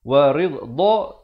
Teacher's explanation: Sini juga idgham bi gunnah. Wa ridha, dad makhrajnya di tepi lidah kanan ataupun kiri mengikut keselesaan ya